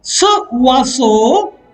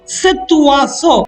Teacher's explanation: There is a hiatus created, a pause, a break created in the flow of the language. French does not allow this hiatus.